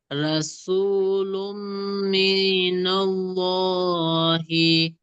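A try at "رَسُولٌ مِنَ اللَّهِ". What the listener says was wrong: মিটা টান দেবেন না।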